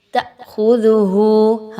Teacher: اس میں دیکھیں تو الف مدہ لا 1 سے 2 الف کے برابر لمبا کریں گے، تأخذہ حمزہ پہ جھٹکا دیں گے، کیوں؟ کیونکہ حمزہ پر جزم کا نشان ہے